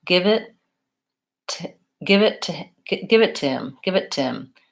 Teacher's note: the initial H will sometimes drop out. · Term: reduction